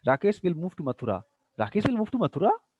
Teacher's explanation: again you find at the end there is a rising tone